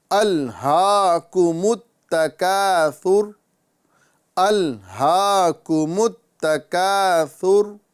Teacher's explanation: یہاں پر سب سے پہلے ہم دیکھیں گے کہ لام ساکن ہے، اس پہ قلقلہ نہیں کرنا ہے